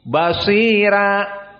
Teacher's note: ar-ra huna muraqqaqah bisabab qablahu sakinah ay basira sakinatul ya. Idan la yuntaq basira mufakhamah basira, hada indal jumhur.